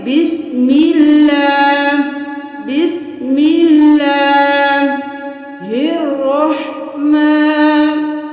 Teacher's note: ابھی یہاں پہ اللہ کے حرف سے پہلے زیر ہے تو ہم اس کو باریک پڑھیں گے